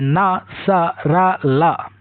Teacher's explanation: जो व्यंजन मसूड़ों यानी दांतों के मूल से बोले जाते हैं उन्हें वत्स्य व्यंजन कहते हैं। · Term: वत्सर्य व्यंजन